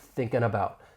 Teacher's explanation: once we drop that G, we can then link that N sound with the beginning vowel sound in about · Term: G dropping